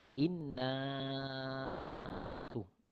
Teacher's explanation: Kemudian inna panjangnya 4 ataupun 5 harakat. Itu adalah mad jaiz munfasil. Mad jaiz munfasil 4 ataupun 5 harakat.